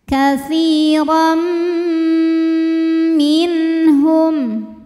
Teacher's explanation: Kemudian berikutnya ada hukum idgham bi gunnah karena ada tanwin fathah menghadapi huruf mim, maka tanwinnya dileburkan ke mim. Katsiran disertai bunyi dengung, jadi ada bunyi M-nya.